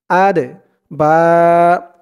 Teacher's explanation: এই দাল হচ্ছে কলকলার হরফ, ধাক্কা দিয়ে পড়তে হবে।